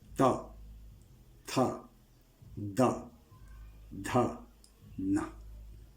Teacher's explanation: जीभ तालु के साथ साथ हमारे दंत को भी स्पर्श करती है। जब तक दंत को स्पर्श नहीं करेगी जिह्वा, तो वर्गीय वर्णों का उच्चारण नहीं कर पाएंगे।